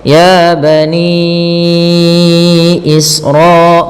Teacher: Panjangnya 4 harakat atau 5 harakat. Maka ninya kita panjangkan 4 harakat. Ya bani Isra, baru dilepas. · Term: mad jaiz munfasil